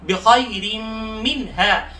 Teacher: बिखैर की खा को मोटा पढ़ेंगे, रा के नीचे दो जेर है, रा को बारीक पढ़ लेंगे, मिन हा की नून पर गुन्ना नहीं करेंगे बल्कि इजहार करेंगे, हा।